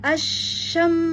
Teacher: ya Asyam ya berhenti dulu di mim ya tawasutkan dulu karena mim termasuk huruf-huruf antara asiddah dan arqah maka ditawasutkan